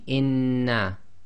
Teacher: you pronounce the first noon sakin, and then the sound of the second noon comes directly out without taking a pause or breaking the sound. So it'll be inna. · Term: gemination